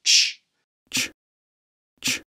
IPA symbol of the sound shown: tʃ